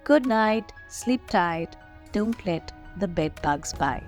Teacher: the diphthong I the sound I is repeated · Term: assonance